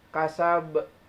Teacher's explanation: Karena ba dimatikan di akhir bukan asal. Pantulannya agak besar. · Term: qalqalah kubro